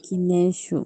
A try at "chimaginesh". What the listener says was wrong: Guinesh. Aquí la K para la pronunciación es como la G, Guinesh.